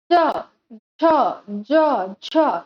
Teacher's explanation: जीवा का अग्रभाग तालु को स्पर्श करता है, कठोर तालु को। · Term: तालव्य व्यंजन